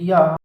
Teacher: या अंतस्थ है, तालु से बोली जाती है